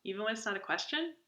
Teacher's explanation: Uptalk is when it's this style where you always end everything in a high-pitched tone